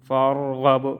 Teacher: را کو موٹا پڑھیں گے اور با میں قلقلہ